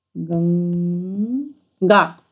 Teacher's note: हा घशामध्ये गंग गंग असा उच्चार होतोय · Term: अनुस्वार